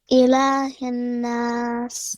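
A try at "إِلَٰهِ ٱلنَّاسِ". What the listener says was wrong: You have to apply gunna on noon. Ilahin nas.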